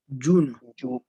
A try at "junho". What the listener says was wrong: Junho. Junho. It's a little difficult to pronounce the NH. It's a nho sound. Nho. Junho. Junho.